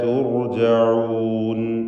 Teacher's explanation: വ ഇലൈന തുർജഊൻ, റാഇന് തഫ്ഖീം കൊടുക്കണം. സുക്കൂനും തൊട്ടു മുമ്പിൽ ദമ്മും വന്നതുകൊണ്ട് തുർജഊൻ എന്ന് തടിപ്പിച്ച് റാഇനെ ഉച്ചരിക്കേണ്ടതാണ്